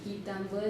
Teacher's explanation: Entonces tenemos quitambuelingüe, van a salir, y quitambuel, o sea, es una L como ensordecida por el plural